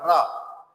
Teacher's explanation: रा को हम बोलते हैं तो जीभ हमारी थोड़ी रगड़ती सी है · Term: प्रकंपित व्यंजन